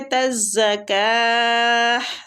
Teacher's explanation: گے، تزکاہ جب ہم تا پہ ساکن کر رہے ہیں تو تا کی آواز کو ہم ہا میں تبدیل کر دیں گے ساکن کرنے کی وجہ سے